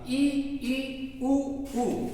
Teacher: मुख देखिए बिल्कुल कम खुलेगा, ई ऊ ऊ, मुख न के बराबर खुलता है, इसी कारण इनको संवृत कहते हैं।